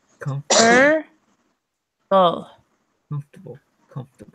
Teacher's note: But I'm not saying the O in the middle.